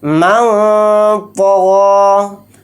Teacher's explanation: کے حروف میں سے ایک حرف ہے، تو یہاں پر بھی نون کی آواز کو ناک میں چھپا کر اخفا کے ساتھ پڑھیں گے